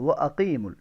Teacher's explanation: یہ وہ عقیق باریک قاف کے ساتھ نہیں پڑھنا، موٹے قاف کے ساتھ، وہ عقیم، ٹھیک ہے، وہ عقیم الوزن، زا کے اندر سیٹی کی آواز کو ہونا ضروری ہے.